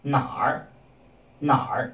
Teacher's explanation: R at the end is pronounced together with the syllable before it. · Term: R Hua